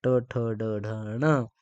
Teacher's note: मूर्धन्य वर्ण ज्याचा उच्चार करताना जिभेचा शेंडा काय होतो टाळूच्या वरच्या भागाला लागतो